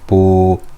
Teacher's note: a ba with a dhamma on it followed by a waw. So yep, as you know, you guessed it, we will stretch it for two harakas. Ba, dhamma, waw, bu.